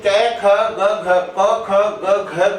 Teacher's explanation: क ख ग घ का उच्चारण स्थान क्या होता है, कंठ होता है